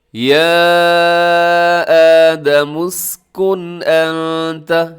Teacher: یہاں جو لکھا ہوا ہے نا اسکن انت، یہاں آخر میں اسکن کے آخر میں نون ساکن ہے اور نون ساکن کے بعد حمزہ آ رہا ہے انت کے شروع میں، تو یہاں پر ہو رہا ہے اظہار حلقی. آپ نے اس کو ظاہر کر کے پڑھنا ہے، آپ نے یہاں پر غنہ نہیں کرنا، تیزی سے پڑھ جانا ہے.